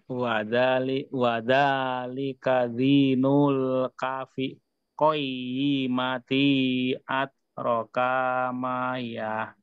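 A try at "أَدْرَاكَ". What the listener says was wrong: Adro. Ro-nya yang panjang Pak, bukan kaknya.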